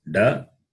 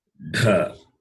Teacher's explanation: This is da, alpa prana, non-aspirate, and mahaprana is dha. Mahaprana, dha.